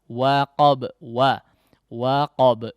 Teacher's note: Wa difathahkan dulu ya, hati-hati jangan sampai wo. Jangan sampai terdengar wo ya, terpengaruh ketebalan huruf qaf di huruf setelahnya.